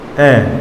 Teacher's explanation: उच्चारण करते समय जीभ के मध्य भाग उठता है, जीभ का मध्य भाग उठता है